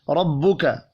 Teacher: تفخیم سے مراد ہے پر پڑھنا، جیسا کہ ربک، زبر کی بات ہوئی ہے، را پر زبر ہے، را کو پر پڑھیں گے